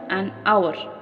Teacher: begin with a vowel sound as the initial H is silent.